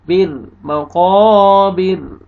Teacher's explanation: وقف کی صورت میں را ساکن ہو جائے گا اور را کو باریک کریں گے کیونکہ را سے پہلے کسر ہے